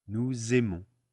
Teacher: the S is always going to be a Z sound when we make the liaison